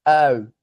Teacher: we could think of that dong as beginning with uh and ending sort of with a W right sort of with that consonant w because really it just ends like this